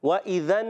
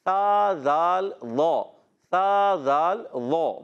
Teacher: ذال ادا ہوتا ہے زبان کا سرا اوپر کے دانتوں کے اندرونی کناروں سے